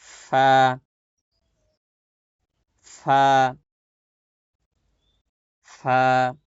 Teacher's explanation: নিচের ঠোঁটের পেট সামনের উপরের দুই দাঁতের আগার সঙ্গে লাগিয়ে ফা উচ্চারিত হয়